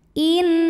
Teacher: yang menghadapi huruf halqi atau huruf tenggorokan yaitu huruf Kha maka nun sukun kita bunyikan dengan jelas bunyi n-nya jelas tidak perlu ditahan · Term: izhar halqi